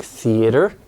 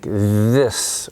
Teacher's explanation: the teeth so this is your your front teeth and then your tongue tip is just maybe a millimeter behind your front teeth usually and you're creating friction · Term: th sounds